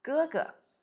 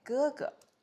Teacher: First tone and then neutral tone